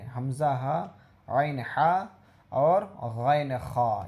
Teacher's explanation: حروف حلقی 6 ہیں، 3 مخرج سے ادا ہوتا ہے، حمزہ ہا، عین حا اور غین خا، یہ حروف حلقی ہے۔ حروف حلقی اس لیے کہتے ہیں کہ یہ حلق سے ادا ہوتا ہے